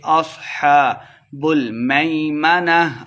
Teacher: صاد کو موٹا کر کے پڑھیں گے ، اصحاب المیمنہ، آخر پہ ہا کی آواز آئے گی، لمبا